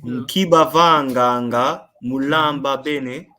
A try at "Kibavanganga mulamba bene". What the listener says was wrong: Well done.